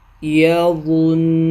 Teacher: شد والا حرف نون پہ آ گیا اور نون پہ ہم وقف کرنا چاہ رہے ہیں، تو پھر نون پہ غنہ کر کے وقف کریں گے